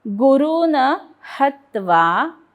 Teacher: ह वरती आघात कारण पुढे जोडाक्षर